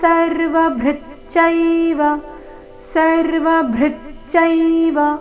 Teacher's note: ಬೃ ಮೇಲೆ ನೈಸರ್ಗಿಕ ಆಘಾತ